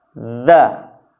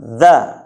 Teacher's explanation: huruf dha ini cara penyebutannya sama seperti kita menyebutkan huruf tha. Lidahnya dikeluarkan sedikit.